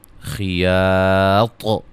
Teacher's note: جب وقف کریں گے طا کو خوب واضح کریں گے، قلقلہ